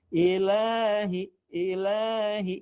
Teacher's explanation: lah itu tidak boleh panjang-panjang, ya, cukup 2 harokat aja teorinya